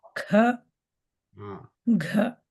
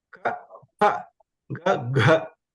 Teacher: So Mahapranaha, we have to give more air out of our mouth.